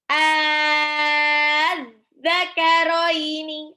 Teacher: Az-zakaroini. A-nya dipanjangin 6 dulu, baru ketemu zal tasdid, karoini langsung. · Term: mad farqi